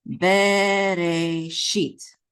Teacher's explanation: The accent is on the last syllable, sheet.